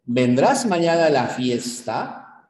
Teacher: en este tipo de preguntas o este tipo de oraciones la curva melódica sube es ascendente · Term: tonema final